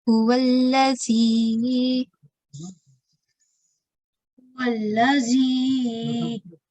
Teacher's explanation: the letter Zal has a hissing sound. You'll feel the air escape from the side of your mouth.